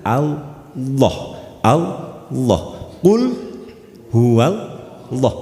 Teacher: lafat Allah itu yang ditebalkan adalah lam yang kedua, lamul jalalah yang kedua. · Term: tafkhim